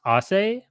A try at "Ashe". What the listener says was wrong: So it's pronounced Ashe, actually, like with the H in it.